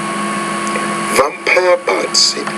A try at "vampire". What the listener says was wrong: Vampire with the V with more vibration.